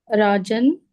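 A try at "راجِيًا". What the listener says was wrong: In the kasratain, there's a ya. Take out the ya first. Raji. Then you can put your yan. Rajiyan.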